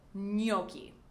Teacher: The G is silent, and we do not make the ch sound that you commonly would hear with a CH spelling in English, because this word comes from Italian.